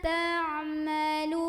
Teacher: Bima ta'malu, lu di sini juga mad tabi'i karena ada waw sukun sebelumnya dhammah, maka huruf yang berbaris dhammah yaitu huruf lam kita panjangkan 2 harokat